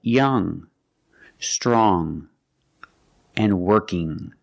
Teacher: It makes a sound in your nose, like this. There's no g sound when you see ng at the end of a word. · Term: nasal sound